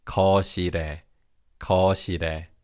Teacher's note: Notice how the 리을 in the second syllable carries over to the third syllable.